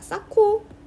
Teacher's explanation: 히읗과 기역이 만났어요. 그래서 키읔이 됐습니다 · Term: 자음 축약